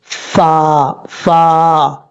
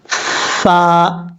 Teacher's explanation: اوپر والے جو دو دانت ہیں سامنے والے ان کا کنارہ نیچے والے ہونٹ کی تری والی جگہ پہ لگے گا تو فا پڑھا جائے گا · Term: فا کا مخرج